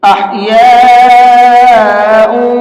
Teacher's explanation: اس بڑے مد کو 4 سے 5 الف کی برابر کھینچ کر کے پڑھیں گے، اور 4 سے 5 الف کی برابر اگر ہم ٹائم کے حساب سے لگائیں تو 4 سے 5 سیکنڈ ہوتا ہے، تو 4 سے 5 سیکنڈ تک اس کو کھینچ کر کے پڑھیں گے۔ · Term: بڑا والا مد